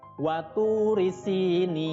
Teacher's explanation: Kemudian di ayat yang kedua, waturi sinin. Ya, di situ ada watu, tu itu panjang ya, namanya mad tabi'i, panjangnya 2 harokat. Si juga sama ya, panjangnya 2 harokat, namanya mad tabi'i. · Nun kasroh bertemu dengan huruf ya sukun itu mad tabi'i ya, bacanya panjang 2 harokat. Tapi karena bertemu dengan nun yang disukunkan di akhir kalimat, namanya berubah menjadi mad arid lis sukun, panjangnya 2 sampai 6 harokat.